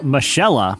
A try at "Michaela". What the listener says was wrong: I think it's Michaela. I think that's pronounced Michaela. Oh, Michelle, but she has an A. It's Michaella. Michaella. That's Michaela.